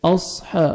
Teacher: साद को मोटा करके पढ़ेंगे, हा को 1 सेकंड खींचना है